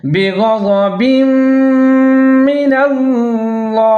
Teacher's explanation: ادغام کریں گے غننے کے ساتھ 3 سے 4 سیکنڈ تک آواز کو ناک میں چھپائیں گے